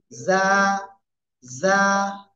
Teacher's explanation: জিহ্বার আগা, সামনের নিচের দুই দাঁতের পেট ও আগার সাথে লাগাবো। লাগিয়ে আমরা কি করব? উচ্চারণ করবো এবং একালিফ টেনে পড়বো।